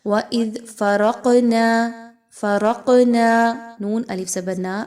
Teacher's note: الف مدہ ہے، 1 سے 2 الف کے برابر اس کو پڑھیں گے۔